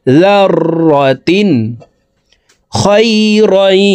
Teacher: يعمل مثقال ذرة তানউইনের পরে ইজহারের হরফ খ আসছে, এই কারণে এই তানউইনওয়ালা তাটি গুন্না ছাড়া স্পষ্ট করিয়া পড়ব।